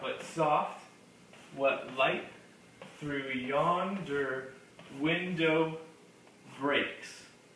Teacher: 5 separate feet in which each foot will be its own iamb. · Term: iambic pentameter